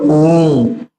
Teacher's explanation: वह स्वर जिसके उच्चारण में ह्रस्व स्वर के उच्चारण से तीन गुना अधिक समय लगता है। कितनी बार? इसमें तीन गुना अधिक समय लगता है। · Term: प्लूटा स्वर